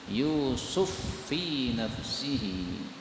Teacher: menjadi faqasarqo seperti qallah masih di ayat ini yusufu Fi ini Fa ketemu Fa boleh idgham menjadi Yusuf Fi nafsihi